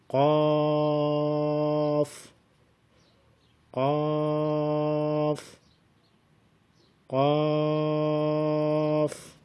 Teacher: زبان کی جڑ کوے کے قریب جب نرم تالو سے لگے تو اس سے قاف ادا ہوتا ہے۔